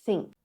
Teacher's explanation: Your tongue is staying behind your teeth instead of coming out. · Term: tongue stays inside